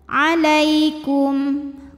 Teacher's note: sebab ada Ya Sukun didahului fathah maka dibacanya lembut